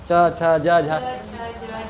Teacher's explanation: तो सारा क्या होता है, तालु से त थ द ध, आप टच कीजिए तो जिह्वा टच होगा, त थ द ध, हाँ सॉरी हाँ, च छ ज झ, है ना, सारा तालु में टच हो रहा होगा, ठीक है, तालु के हिसाब से। मेरा बिना तालु में टच किए आप च बोल ही नहीं सकते हैं